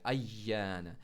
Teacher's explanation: या ज़बान के बीच से निकलने वाला लेटर है